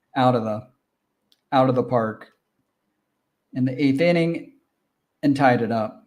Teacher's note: And then out of the always sounds like out of the. So Americans especially, we always turn the hard T sound in between vowel sounds into a softer D sound